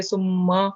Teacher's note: سما میم پر تجدید ہے تو اس کو 2 آواز دے کے سما پڑھیں گے